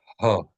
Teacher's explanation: hey is an H sound produced when your throat is completely relaxed